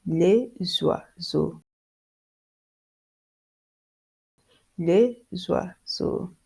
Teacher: And next, you pronounce S and X like Z. You pronounce S and X like Z.